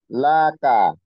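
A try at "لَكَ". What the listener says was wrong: না কোন টান হবে না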